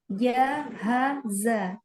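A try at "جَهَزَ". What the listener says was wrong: Ja. Kuatkan lagi huruf jim.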